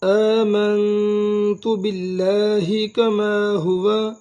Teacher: حمزہ کھڑا زبر دو حرکات لمبا ادا کریں گے. میم کو نون کے ساتھ ملائیں گے اور غنہ بھی کریں گے.